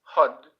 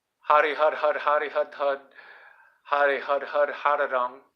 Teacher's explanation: The R, the way it's just, there's no vowel at the end, so it's like a R with a sharp drop off